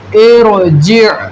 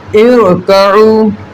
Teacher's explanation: را ساکن سے پہلے عارضی زیر ہو تب ہم را کو پر پڑھیں گے